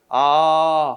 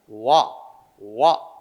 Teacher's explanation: 입모양도 변하고 혀의 위치도 변한단 말이야. 이것을 이중모음이라고 한다.